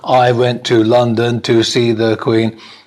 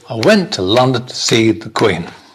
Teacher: the little words in the middle in between the verbs and the nouns are not not stressed